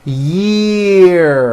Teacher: that has a high vowel sound, E